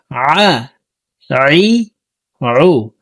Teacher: আইন হরফকে হলকের মধ্যখান থেকে চাপ দিয়ে উচ্চারণ করতে হবে।